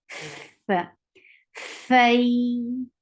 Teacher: Whenever we look at fa, it should be with hums. This sound should be there, and hums is a flow of breath.